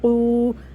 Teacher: واو ساکن سے پہلے پیش ہے، اس کو کھینچنا ہے اور قاف کو موٹا کر کے پڑھیں گے